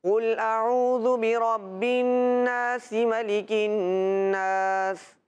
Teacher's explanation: انہوں نے ملا کے پڑھا، وقف نہیں کیا تو سین کی حرکت پڑھی گئی۔